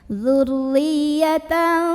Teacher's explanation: Maka cara membacanya tanwin fathah ini dibunyikan samar-samar. Siap-siap kita mau ngucapin huruf dhad disertai dengungan. Nah ini samar dengungnya sama seimbang karena dhad ini makhrajnya tidak terlalu dekat juga tidak terlalu jauh dari nun. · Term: ikhfa awsat